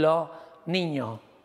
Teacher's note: la s que se está convirtiendo en una aspirada es un sonido del debilitado los niños se convierten los niños